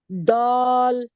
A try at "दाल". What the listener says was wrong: दाल खींचा नहीं आपने? जी, इस दाल को खींचना है। दाल। ये दाल जो मैंने आपको बताया था, दाल के बाद अलिफ है फिर लाम है।